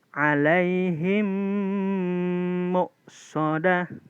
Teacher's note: cumi-cumi mati bertemu dengan huruf mim karena ini idgom berarti pertemuannya cara membacanya harus di dengung sama kayak idgham yang ada di nun mati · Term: idgham mimi